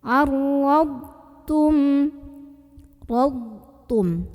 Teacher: Huruf dhad ini punya ciri khas sifat yang tidak memiliki lawan. Namanya sifat istitolah. Jadi suaranya memanjang.